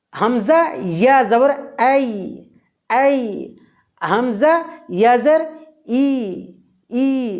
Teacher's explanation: ইয়া বর্ণটি উচ্চারণের সময় জিহ্বার মাঝখান উপরের তালুর দিকে ধাবিত হবে, কিন্তু মাঝখানে সামান্য পরিমাণ ফাঁকা থাকবে।